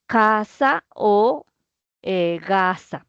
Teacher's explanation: Sí, porque son producidas eh desde la parte posterior. El punto de articulación está en la parte posterior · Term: sonidos guturales